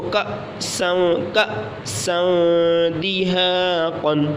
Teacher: حمزہ ساکینہ کو ہمیشہ جھٹکا دے کر پڑھیں گے، تو حمزہ کے اوپر جزم ہے تو حمزہ ساکن ہو گیا، تو اس کو کأسا دہاقا، بخس دراہم، سمیع علیم۔